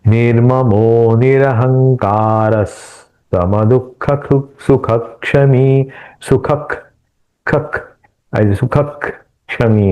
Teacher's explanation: विसर्ग के बाद क आने के कारण यहां हम ख के जैसा हल का उच्चारण करेंगे